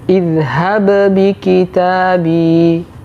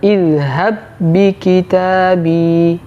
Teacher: idgham disebut dengan Idgham mutamatilain contoh pada ayat ini idhab bikitabi jadi tidak ada lagi Qalqalah pada huruf ba yang pertama kita tidak boleh membaca zhab bikitabi tapi yang benar idhab bikitabi